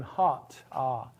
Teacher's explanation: But for hot, your lips don't round. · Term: back vowels